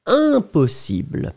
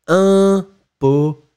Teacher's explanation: So, it's a nasal, so it's un, impossible. You don't hear any M, you don't hear, you just hear the sound of the nasal. So, one more time, it goes into your nose.